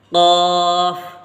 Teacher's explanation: آپ اس کو قاف پڑھیں پر کر کے یعنی موٹا کر کے اور حلق سے نکالیں